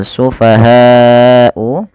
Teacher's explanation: panjangkan lafal bunyi ha sepanjang 4 harokat atau 5 harokat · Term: mad wajib muttasil